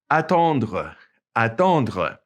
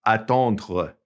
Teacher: Okay, notice it ends with that RE and it's pronounced kind of glottally, attendre. It's kind of back in the back of your mouth